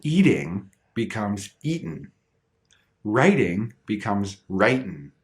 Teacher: like eating eating that tea sound becomes that softer dip but if you cut that G suddenly the final sound is n and it falls under the same rule as mountain so eating